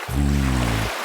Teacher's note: The V sound engages the vocal cords.